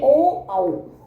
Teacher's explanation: ഓ എന്ന് പറയുമ്പോൾ നമ്മൾ ഓന്ന് ചുണ്ടല്ലേ കൂടുതൽ ഉപയോഗിക്കുന്നത്. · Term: കണ്ഠോഷ്ട്യഹ